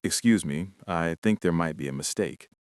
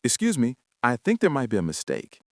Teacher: Imagine saying, "Excuse me, I think there might be a mistake." It sounds like you were about to fire someone from their job. You need to use a slightly higher rising pitch. It should almost sound like a friendly question. You want your voice to go up at the end of the sentence.